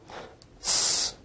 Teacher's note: s is a voiceless alveolar fricative